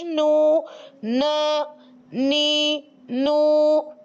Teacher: तरफे लिसान जब अनिया से लेकर सनाया के दांतों की जड़ों से लगती है · جب طرف لسان جب انیاب سے لے کر ثنایا کے دانتوں کی جڑوں سے لگتی ہے، یعنی وہاں تو زواحق سے لگ رہی تھی، وہاں ایک دانت اور چھوڑ کر یعنی انیاب سے لے کر ثنایا تک کے مقابل مسوڑوں سے لگتی ہے تو حرف نون ادا ہو جاتا ہے۔ ثنایا کے دانتوں کی جڑوں سے جب لگتی ہے نا تو حرف نون ادا ہو جاتا ہے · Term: हर्फ नून